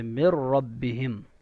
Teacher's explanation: یرملون میں سے را ہے تو یہاں پہ آواز کو ناک میں روکا نہیں جائے گا، بلکہ جلدی سے مر ربہم. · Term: ادغام بلا غنہ